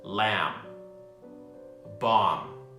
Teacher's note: the B is not pronounced and is silent